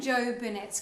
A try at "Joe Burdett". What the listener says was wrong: Burnett. Burdett. You said Burnett.